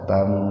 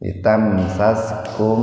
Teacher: Tam, mim mati bertemu dengan sin dalam satu kata. Jadi mimnya dibaca sepintas saja, tidak dibaca idhar syafawi gitu. Karena dalam satu kata.